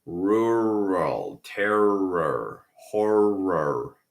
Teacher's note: All words with R, we have that strong, clear, rhotic R.